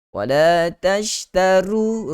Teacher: ra baris hadapan tebalkan dengan baik supaya tidak terbawa-bawa untuk kita nipiskan seperti bunyi tashtaru.